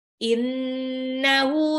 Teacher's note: Innahu, nunnya digunnah ya, harus ditahan.